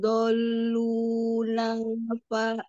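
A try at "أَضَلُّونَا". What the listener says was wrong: A-nya mau dibaca. Adolu, jangan dolu. Adolu, ada itu. Ada alif. Ada alif. A-nya ketinggalan, nggak dibaca.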